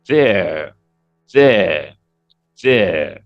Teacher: The R will not come out in there